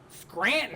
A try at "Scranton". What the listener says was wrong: Scranton. You don't pronounce the first T. Scranton. It's not Scranton. You only pronounce there's one T.